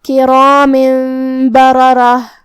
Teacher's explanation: फिर हर्फुल बा है कलिमत बररह में, बा हुरूफ इक़लाब में से है, तो हम ये तनवीन को मीम में बदल के गुन्ना के साथ ये हुक्म को अदा करेंगे।